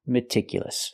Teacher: I cannot use a long e like green beans I need a short I